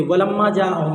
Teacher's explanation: उसके बाद देखिए अलिफ से पहले ज़बर है, इसलिए अलिफ मद्दा हुआ। अलिफ मद्दा को एक अलिफ के बराबर खींच कर पढ़ेंगे